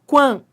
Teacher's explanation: você foi do som de U pro som de A, ó. Quan, ó como você tá crescendo, ditongo crescente.